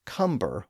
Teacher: it's often pronounced as cumber with a B sound in the middle